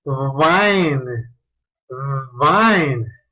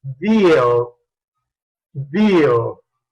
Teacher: Como tú puedes notar, se produce con el labio inferior tocando al diente superior. Es fricative porque pasa el aire, por la obstrucción parcial se produce turbulencia de aire. Y es voiced.